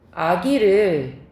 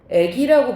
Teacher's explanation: 뒤에 있는 이 때문에 앞에 있는 아가 애로 바뀌는 거. 앞에 있는 게 바뀌는 게 역행이지. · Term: 이모음 역행동화